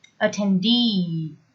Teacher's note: Attendee, with the stress on the last syllable.